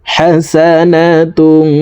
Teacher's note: একটি হরফ তা আসছে এই কারণে এই তানউইন ওয়ালা তাটি অর্থাৎ দুই পেশ ওয়ালা তাটি নাকের ভিতরে লুকাইয়া গুন্নার সহিত পড়ব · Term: ইকফাহ গুন্না